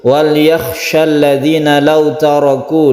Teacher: Di sini yang harus kita perhatikan yaitu huruf kha ya, wal yakhsha. Huruf kha itu adalah huruf halqi atau tenggorokan, harus jelas kha-nya itu.